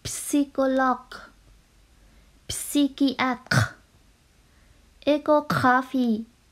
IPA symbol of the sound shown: k